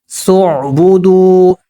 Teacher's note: صعبدوا، واو ساکن سے پہلے پیش ہے، واو حروف مدہ پیش کو 2 حرکات کے برابر لمبا کریں گے